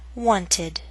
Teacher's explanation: t as in walked like d d as in loved and like d that adds an extra syllable